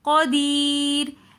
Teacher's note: شیء قدیر، قدیر کے اندر یا ساکن اس سے پہلی زیر تو یہ ایسی یا مدہ کہلائی جاتی ہے تو اس لیے ہم یا مدہ کو تھوڑا سا کھینچ کر پڑھیں گے